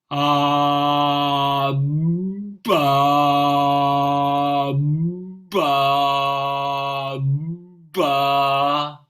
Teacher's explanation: B is glottis open, soft palate close.